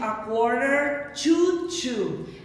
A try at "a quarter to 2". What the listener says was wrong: Mas esse to 2 não é assim que pronuncia. O primeiro to, ele desaparece. Então vai ser a quarter to 2.